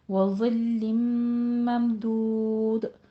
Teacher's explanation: مم میں جو میم ساکن ہے اس کا اظہار شفیع کرنا ہے